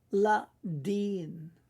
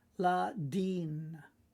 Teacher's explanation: Now remember, because you've got a yod there, the I sound is not short, but a little bit longer